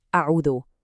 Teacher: After you say the ayn with the Dammah, your lips are rounded. Now to say the next letter, the waw, you do that tiny little retraction to get the waw sound out clearly.